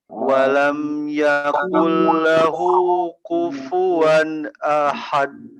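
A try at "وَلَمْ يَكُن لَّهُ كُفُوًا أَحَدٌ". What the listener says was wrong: Nah, itu pakai kaf, Pak. Jangan pakai qaf, jangan walam yakul, tapi walam yakul, kul.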